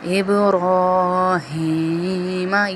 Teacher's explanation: یہ محمد کی طرح والا ہاں نہیں ہے، باریک نہیں ہے، اس ہاں کو کہتے ہیں سینے سے نکلنے والا ہاں